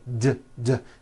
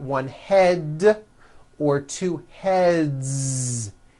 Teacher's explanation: the word head ends with a voiced D